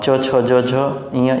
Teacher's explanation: च, छ, ज, झ, ञ ये आपका तालव्य तालव्य से उत्पन्न होगा